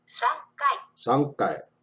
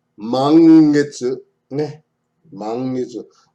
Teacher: N before a K and a G represents a sound similar to the NG in sing.